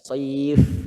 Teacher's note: Ya, wasoif endingnya kan ini fa Pak ya, satu bibir Pak ya, bibir bawah bagian dalam sama gigi atas, gigi seri atas. Soif. Jadi jangan bibirnya jangan nempel.